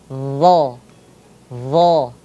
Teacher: Ujung lidahnya bertemu dengan ujung gigi seri yang atas. Nah, sahabat-sahabat semuanya, bisa ujung lidahnya itu dikeluarkan sedikit saja. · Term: huruf do, huruf dha